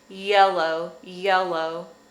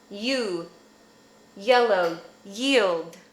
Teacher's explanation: hard part that's your hard palate so to make this sound the tip of your tongue is going to stay behind your bottom front teeth and your tongue is going to arch up in the middle